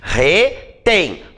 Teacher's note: Qual é a sílaba tônica? É o tem.